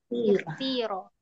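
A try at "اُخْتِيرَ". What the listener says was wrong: ikhtira. Lebih ringan ikhti.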